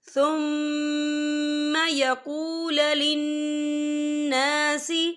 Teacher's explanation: یہاں پر الف مدہ ہو رہا ہے، تو ہم اسے 2 یا 3 حرکت کے برابر کھینچ کے پڑھیں گے